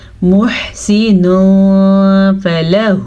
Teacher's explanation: نون ساکن یا تنوین کے بعد والا حرف حروف اخفا میں سے ہو، تو اخفا کا مطلب ہے چھپانے والے حروف، چھپانے والے حروف اخفا یعنی حروف اخفا میں سے ہو تو نون ساکن اور تنوین کی آواز کو چھپا کے غنے کے ساتھ پڑھیں گے